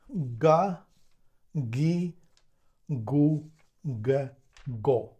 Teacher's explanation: G is a voiced k. The movement is the same. We move the back of the tongue a little bit to this place, we touch it, and we will have g.